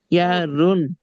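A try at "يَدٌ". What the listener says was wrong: ইয়ার রুন না ভাই, ইয়াদ ইয়াদ, ইয়া দাল জবর ইয়াদ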